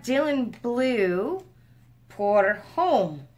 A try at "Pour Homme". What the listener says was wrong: Just an FYI, in French, you don't pronounce the H. So if it is French, you're pronouncing it wrong.